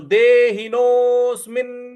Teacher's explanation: और म पर छोटी इ की मात्रा है देहिनो िन नोस्मिन मी के बाद जो आधा न है इस पर हमको आघात देना है